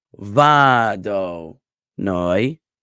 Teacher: the emphasis is on the first and last syllable, but not on the middle syllable. So it's vado noi, like that, with va emphasized and noi emphasized and do de-emphasized.